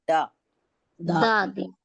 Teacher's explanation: दाल में क्या होता है, जबान की नोक हमारी ऊपर की दांत की जड़ में लगती है, ठीक है, तो आवाज आती है दा, है ना।